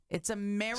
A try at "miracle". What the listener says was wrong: Sounds like you're saying America.